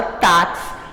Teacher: esse x aqui ele tem um som de ks então ele acrescenta mais uma letra só quando você fala a